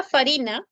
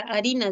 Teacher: La F inicial latina se dejó de pronunciar en algunas palabras del español y en la escritura apareció la huellita, que era la letra H.